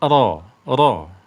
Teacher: ro di awal dia tersentuh namun di akhir dia tidak tersentuh dan mulutnya juga terbuka